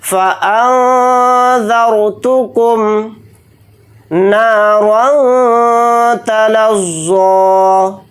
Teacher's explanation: نون کے ساتھ الف مدہ ہے، نون الف زبر نا کو تھوڑا کھینچ کر پڑھیں گے. را کے اوپر دو زبر ہیں یعنی تنوین، تو را کو یہاں پر موٹا یعنی پر پڑھیں گے. · را ساکنہ سے پہلے زبر آ رہا ہے ذال کے اوپر، تو را کو یہاں پر موٹا یعنی پر پڑھیں گے